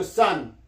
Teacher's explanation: 어와 아의 중간 발음입니다